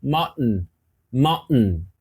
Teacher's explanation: faz junto comigo tem uma paradinha isso é chamado de glotz é pela glote você para o ar você suspende o ar Dá uma paradinha e dá esse som